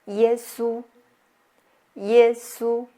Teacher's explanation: This is a flat mark which is the first tone in Chinese. So we'll use the highest pitch like high pitch and flat.